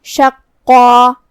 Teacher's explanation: مد الف اپنے پیچھے والے حرف کا حکم لیتا ہے تفخیم میں اور ترقیق میں، تو جو کہ اس سے پہلے حرف القاف ہے تو ہم قاف کو اور مد الف کو دونوں کو بھاری آواز میں پڑھیں گے